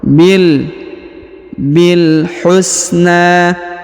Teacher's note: huruf na dipanjangkan dua harakat atau ya dua atau tiga ya karena di atasnya terdapat Alif